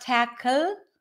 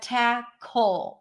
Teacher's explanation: end is a dark l so it's not tle but tacle it's like a combination of an l and a w